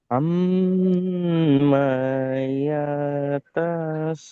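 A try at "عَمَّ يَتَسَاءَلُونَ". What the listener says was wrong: মা ইয়া তা এই তিনটা একদম টান দেবে না, এই মিটটা কোনটা করবে না।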